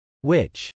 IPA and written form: wˈɪtʃ (witch)